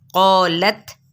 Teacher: यहाँ पे मद्दे से बिल अलिफ भी है और क़ौफ पुर भी है, तो अलिफ भी पुर हो जाएगा